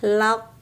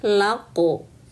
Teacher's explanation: Pangkal lidah naik menempel ke langit-langit mulut paling belakang. Langit-langit mulut yang lunak tuh yang paling belakang, laq. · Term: qalqalah huruf qaf